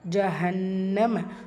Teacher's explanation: நூன் முஷாதா குன்னா செஞ்சு ஓதணும். இங்கே சுவாதலாம் ஏன் இருக்கிறனால நீங்கள் ஸ்டாப்பும் பண்ணிக்கலாம், கண்டினியூவும் பண்ணிக்கலாம்.